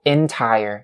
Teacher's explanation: the first syllable of this word has to be with the short E sound. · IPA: /ɪn-ˈtaɪ-ər/